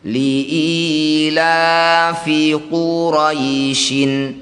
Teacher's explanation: Jadi bunyi ya sukunnya kita panjangkan enam harakat. · Mad itu artinya panjang, lin itu artinya lunak atau lembut. Jadi bunyi ya sukunnya kita panjangkan 6 harokat, baca dengan lembut, berikan huruf vokal i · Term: mad lin